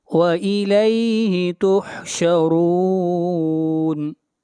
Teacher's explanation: وَإِلَيْهِ، وَإِلَيْهِ تُحْشَرُونَ، وَإِلَيْهِ تُحْشَرُونَ، را کو موٹا پڑھیں گے، را کے اوپر پیش ہے